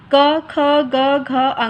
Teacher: इसका उच्चारण आप बोल कर देखिए कंठ से निकलता है